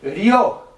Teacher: Tá vendo que o mais forte é o o. Então o i é semivogal, o o é vogal.